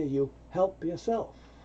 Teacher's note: This PY combination often becomes a help ya, help yourself.